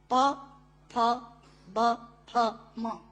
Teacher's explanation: प, फ, ब, फ, म दोनों होंठ मिलाकर बोले जा सकते हैं। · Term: ओष्ठांग